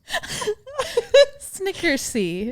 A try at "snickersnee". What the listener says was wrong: The N after the last S. Snickersnee.